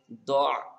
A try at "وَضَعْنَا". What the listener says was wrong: দ দ দ নুন নুন আলিফ জবর না, আলিফটা পড়তে হবে, وَضَعْنَا